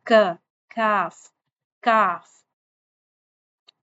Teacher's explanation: जब हम काफ अदा कर रहे थे उसमें हमारी जो बैक साइड थी जुबान की वो पीछे युवला की तरफ कौवे की तरफ माउथ की बैक साइड पे लग रही थी। लेकिन जब हमने काफ अदा करना है उसमें हमारी जुबान जो है उसकी पुश्त जो है वो बुलंद तो होगी। जुबान लेकिन वो थोड़ा आगे की तरफ बुलंद हो गई।